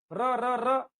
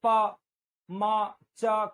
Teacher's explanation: vibrate होती है, ऐसे जैसे मोबाइल वाइब्रेट होता है, तो जीभ में कंपन, कांपती है जीभ, इसलिए इसका नाम प्रकंपित